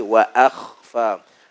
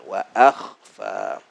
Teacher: hamzah nipis, kha tebal. Senyumkan hamzah a, wa a, kemudian kha kita tebalkan, wa akhfa.